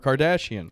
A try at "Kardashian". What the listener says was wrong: Can you say Kardashian as Kardashian? That's how I always say it. No accent. Kardashian. You don't have to put that much of an accent on it, but Kardashian.